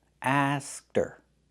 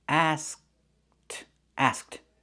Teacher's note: We make the position of the K but we don't release it.